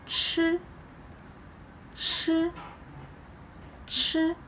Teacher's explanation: when we pronounce 吃, we should make a bigger gap between the tip of your tongue and the ceiling of your mouth